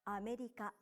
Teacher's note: And you say each syllable for the same length of time. America. Pronounce it like this to sound like a native Japanese speaker.